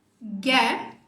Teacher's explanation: Esses dois últimos aqui são o schwa junto do som de R. Então, existe uma união desses dois sons.